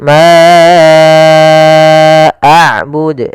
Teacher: Di sini ada bacaan mad jaiz munfasil, yaitu panjangnya kita harus panjangkan empat harakat